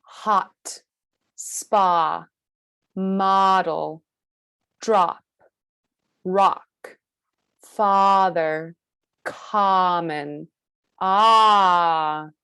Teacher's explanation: our jaw is the most open and the most relaxed, and our tongue is in its lowest position. Ah, ah, ah.